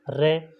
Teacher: आगे है 7 नंबर है प्रकंपित या लुंठित व्यंजन वर्ण, जिस व्यंजन वर्ण का उच्चारण करते समय हवा जीभ से टकराकर लुढ़कती हुई सी बाहर निकलती हैं वह लुंठित व्यंजन वर्ण कहलाते हैं।